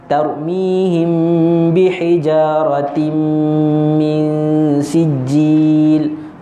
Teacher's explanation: Bila kita baca tarmihim bihijaratim min sijil, kat situ tarmihim bi dengung lagi, bihijaratim dengung lagi, mi pun dengung lagi. Kat situ kita kena dua, dua, dua.